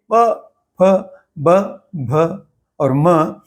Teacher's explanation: और अंतिम वर्ग जो है प वर्ग, इसे जब हम उच्चारण करेंगे प, फ, ब, भ और म, तो इसमें आप देखेंगे, समझेंगे कि इनके उच्चारण करते हुए दोनों ओठ आपस में मिलते हैं, इसलिए इनको ओष्ठ यानी ओठों से निकलने वाले व्यंजन कहा गया है